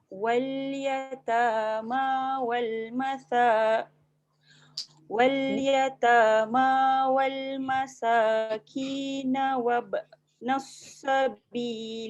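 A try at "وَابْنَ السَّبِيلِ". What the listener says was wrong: Jangan tebal, jangan wabnas.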